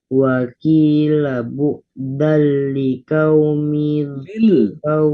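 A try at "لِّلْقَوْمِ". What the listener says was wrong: Lil. Lamnya disukun. Lil.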